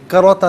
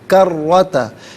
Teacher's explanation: کروتا میں را پر زبر ہے، پر پڑھیں گے، را مشدد بھی ہے، جماؤ کے ساتھ پڑھیں گے